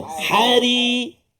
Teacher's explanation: yang kedua ra baris bawah, tarqiq hari